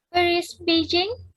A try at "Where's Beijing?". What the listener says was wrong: Ya, bukan Dita, bukan where's Beijing, jangan naik itu. Where's Beijing? Nah kan gitu turun ya.